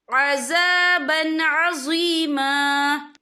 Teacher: یہ دیکھیں عذابًا، با کے پر تنوین ہے، تنوین کے بعد جو ہے عین آ رہا ہے، عین جو ہے حروف ہلکی کا ورڈ ہے، تو ہم یہ اظہار کریں گے، ہم اسے بنا غنہ کے پڑھیں گے